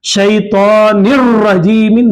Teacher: नून की आवाज को रा में मिला देना और नून की आवाज नहीं आना, नून साकिन की आवाज नहीं आना, निन में जो नून की आवाज आ रही है वो नून की आवाज नहीं आना।